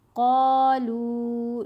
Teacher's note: قاف کے اوپر زبر، ساتھ الف حرف مدہ، لام کے اوپر پیش، ساتھ واو ساکن، واو مدہ، تو دونوں کو لمبا کر لیا